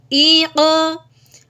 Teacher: حمزہ قوف زیر ق، یہ جو ہے نا ق، یہ قلقلہ یعنی کہ حرف کو اس کی جگہ سے تھوڑا سا ہلا دینا